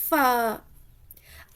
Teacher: فا آپ کا فا دیکھیے ثنایا علیا کا سرا، یعنی اوپر کے 2 دانت جو سامنے والے دانت ہیں نا ان دانتوں کا سرا نیچے ہونٹوں کے اندرونی حصے سے لگے تو فا ادا ہوتا ہے